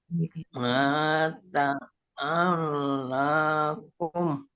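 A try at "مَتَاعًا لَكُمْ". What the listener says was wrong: Maknya pendek. Mata pendek.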